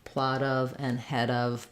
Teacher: Plot of and head of, both are flaps.